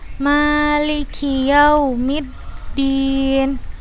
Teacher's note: Kemudian bertemu dengan huruf alif kecil kita bacanya kita panjangkan dua harokat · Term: 2 harokat